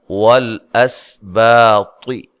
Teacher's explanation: وَالْأَسْبَاطِ، واو کو ادا کرتے ہوئے ہونٹوں کو گول کیجئے، لام کو ہلانا نہیں ہے، اس سین کو ہلانا نہیں ہے، سین پہ سیٹی کی آواز آئے گی، باریک سیٹی۔ با الف مدہ ہے، طا کو موٹا ادا کرنا ہے۔